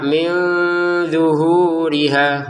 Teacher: min nun ketemu d dibaca dengan samar